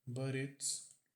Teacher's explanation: Aqui o T entre vogais, ele muitas vezes fica com som de r